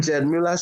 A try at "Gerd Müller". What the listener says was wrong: His name is Ged Muller, not Jed.